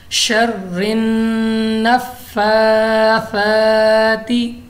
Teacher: इसमें हमारे पास नून मुशद्दद है, गुन्ना करके पड़ा है